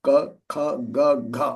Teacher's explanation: It's the throat area, so that's where you have to make the tongue go all the way back. Ka, kha, ga, gha, all the way back. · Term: guttural